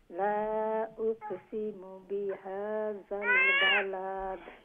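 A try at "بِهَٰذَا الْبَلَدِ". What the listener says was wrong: বালাদ লম্বা করবা না, এন্ডে দি লম্বা করার তো কিছু নাই, খালি কেন ওর খিতা দালর নিচে যে জের জের জজম হই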